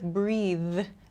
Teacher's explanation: Same thing with breathe. This TH sound at the end, I have to use my vocal cords to make this sound.